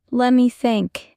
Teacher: Notice how let me often becomes lemmy. Try it. It sounds smoother.